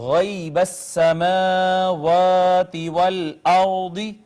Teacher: را ساکن ہے، ما قبل مفتوح ہے، را کو مفخم یعنی پر کر کے پڑھا جائے گا